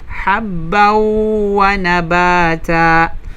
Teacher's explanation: ito po ay tinatawag na idgham. Ayan, idgham na kung saan ay bighunna. Mayroong tinatawag na gunna.